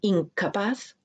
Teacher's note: En incapaz, como K y J, G, G, estas son velares, pues la nasal se pronuncia de una manera velar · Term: nasal velar